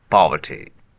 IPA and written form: ˈpɒv.ə.ti (poverty)